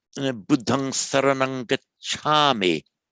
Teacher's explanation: the lengthening of the a before the labial